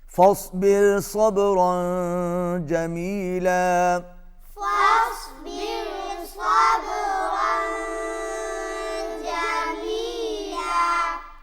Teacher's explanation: تنوین کے بعد جیم آ رہا ہے، یہاں پر اخفا ہوگا، آواز ناک میں جائے گی